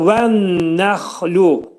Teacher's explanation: İdğam mə'al gunnədir. Nun hərfi burunda sıxılacaq. Xa hərfi boğazın üstündə, boğazın yuxarısında, yuxarısında deyiləcək.